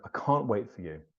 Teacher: can't is the stressed word in this sentence. It's the most important word in the sentence because you want to show the negative.